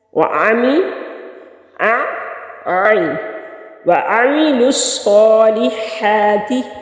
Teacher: صاد مشدد ہے، پیچھے بھی ملے گا اور خود بھی پڑھا جائے گا، اور اس کے اوپر کھڑی زبر ہے، ایک الف کے برابر اس کو کھینچیں گے۔